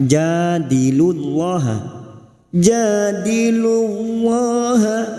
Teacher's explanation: lam jalalah yang sebelumnya dumah kita baca tafkim